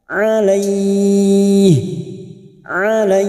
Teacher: fathah yang bertemu Ya Sukun diikuti huruf HID yang baca wakaf namanya mad lin empat harakat kita panjangkan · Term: mad layin